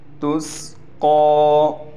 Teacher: قاف پر کڑا زبر ہونے کی وجہ سے قاف کو کھینچیں گے بھی ایک الف کی مقدار اور قاف پر موٹا بھی پڑھا جائے گا